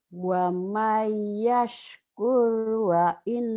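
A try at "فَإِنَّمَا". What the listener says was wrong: Fa'in nama bukan wa nama.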